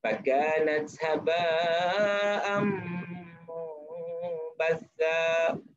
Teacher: Fakanat haba' itu mad wajib muttasil. Mad wajib muttasil baca 5 harakat